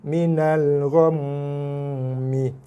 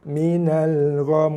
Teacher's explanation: kita tak baca lagi mim, kita wakafkan dia, so mim jadi baris mati